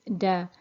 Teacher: So the letter name is Dal, and the phonetic sound is Da, and it's pronounced in the same way as the English D is pronounced. The articulation point is the tip of the tongue with the roots of the upper incisors